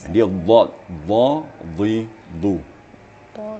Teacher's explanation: makharijul hurufnya di pipi atau di gigi geraham sebelah kanan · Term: dad